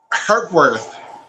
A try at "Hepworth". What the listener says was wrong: There's no, it's HEP. Hep and then worth. Say hepatitis. Say hepatitis correctly, please. Remove the titus or the ititis and just put worth.